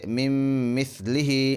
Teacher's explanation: ادغام مع الغنہ میں ناک میں آواز لے جا کر پڑھیں